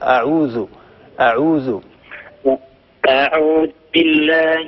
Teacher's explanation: إذال معجمة من طرف اللسان مع أطراف الثنايا العليا